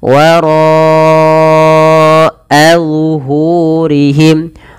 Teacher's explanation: Dan ro sendiri punya bacaan mad wajib muttasil, maka ro dipanjangkan 4 harokat.